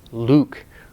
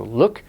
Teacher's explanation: Luke is the long tense vowel. Look is the short lax vowel